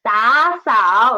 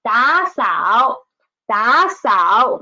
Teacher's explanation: there are two third tones, so we should change the former one into second tone.